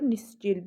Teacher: Vurğu son hecəyə düşür